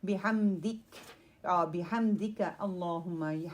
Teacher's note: ہا جو ہے وہ تھروٹ سے نکلے گا، middle part of your throat